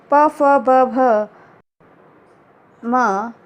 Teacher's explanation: इनका उच्चारण स्थान ओष्ठ से होता है और इसलिए ये ओष्ठ्य वर्ण कहलाते हैं।